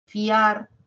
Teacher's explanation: en fiar es un diptongo a pesar de que se escuchan dos porque la mayor fuerza de voz lo tiene la a